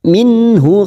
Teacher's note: nun sukun bertemu ha Idhar halq kita baca jelas tanpa mendengung